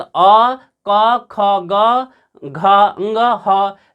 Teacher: अ, क, ख, ग, घ, ङ, ह, विसर्ग का उच्चारण स्थान क्या होता है, कंठ होता है